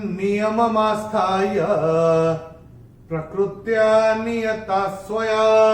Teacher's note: चौथे चरण में ता के बाद विसर्ग के बाद का अक्षर है स, और विसर्ग के बाद जब स आएगा, जैसे हमने यहां देखा था, विसर्ग के बाद जब स आएगा तो विसर्ग का उच्चारण होगा आधा स